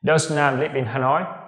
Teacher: Đây là một câu hỏi, và cái người hỏi, cái người nói này, người ta không chắc chắn rằng cái người tên là Nam này sống ở Hà Nội, nên người ta hỏi với ngữ điệu đi lên. · Speakers often use rising intonation at the end of yes-no questions. Tức là gì? Người nói thường sử dụng ngữ điệu đi lên, tức là ngữ điệu lên giọng ấy, ở cuối những câu hỏi đúng hay sai.